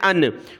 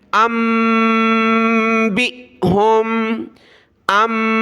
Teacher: आपने मीम पढ़नी है छोटी और नाक में आवाज़ पैदा करनी है